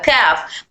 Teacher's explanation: اگر ہماری زبان کی جڑ سخت تالو سے ٹچ کرے گی تو حرف کاف ادا ہوگا